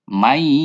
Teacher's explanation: Ini ada nun mati ketemu sama ya, bunyi n-nya, bunyi nunnya itu hilang karena dimasukkan ke huruf ya. Ini bacaan idgham bi gunnah.